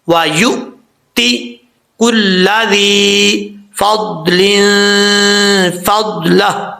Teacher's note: حمزہ ساکن ہے تو جھٹکے کے ساتھ پڑھا جائے گا لیکن کلکلا نہیں کرنا